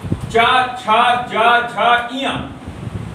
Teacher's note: चा, छा, जा, झा, इया, ये सारे आपके जो पढ़ेंगे तालब व्यंजन पढ़ेंगे, जिनका उच्चारण तलवे पर जीभ के छूने के कारण से होगा, वह व्यंजन तालब व्यंजन कहलाता है